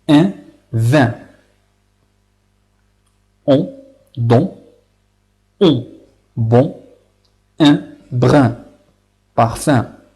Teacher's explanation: Eh bien, puisque leur prononciation sort par le nez. Lorsqu'on prononce ces voyelles-là, on utilise ce son qu'on fait sortir, c'est par le nez et non pas par les lèvres. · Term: les voyelles nasales